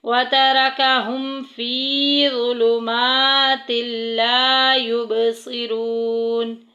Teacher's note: فی میں یا مدہ کا قاعدہ جاری ہو رہا ہے، کھڑی حرکات کو 1 الف کے برابر لمبا کریں گے۔